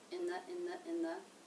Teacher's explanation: The next word, the, has the th sound and the schwa. Now it's unstressed, so along with in, it's going to be low in pitch and flat